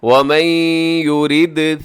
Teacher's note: کتابا مؤجلا، آگے ومن يرد ثواب الدنیا، ومن يرد یہاں نون ساکن ہے، نون ساکن کے بعد یا ہے تو یہاں پہ ہوگا ادغام، وہ بھی غنے کے ساتھ، اور آگے یورد، یورد میں دال کیا ہے جی، دال حروف قلقلہ میں شامل ہے تو یہاں قلقلہ کیجیے گا